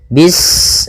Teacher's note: Pada bacaan bis ini sempurnakan huruf sinnya. Ketika sinnya sukun, ini ada sifat shafir, dia harus kita alirkan nafasnya.